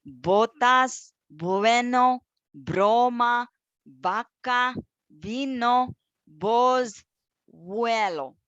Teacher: And the letters B and V, they are pronounced the same.